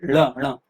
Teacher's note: जीभ का निचला हिस्सा एकदम से उल्टा होकर ठोकर मारता है और तेजी से सामान्य स्थिति में फिर से लौट आता है ना। जैसी जीभ थी वैसी ही हो जाती है ना। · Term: उत्क्षिप्त व्यंजन